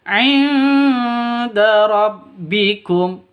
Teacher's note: Nun mati bertemu dengan dal. Cara bacanya samar didengungkan, siap-siap ke huruf dalnya karena bacaan ikhfa hakiki.